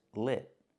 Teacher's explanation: It's not with the long E sound like green beans. It's with the short I sound like this is, lit.